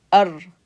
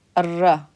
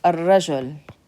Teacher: So alif, the a sound connecting to the r. Ar. And then ra has fatha. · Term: sun letter